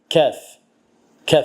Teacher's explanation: Kəf hərfi isə qaf hərfinin məxrəcindən bir az öndə. Yəni dilin özünə yaxın.